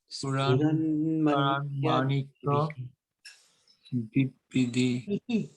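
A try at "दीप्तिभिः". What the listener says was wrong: Diptibihi. Because we've got the end, at the end we've got the H. Yes, so Ispuran Manikya Diptibihi. Diptibihi. Yes, because BH is bha, bihi.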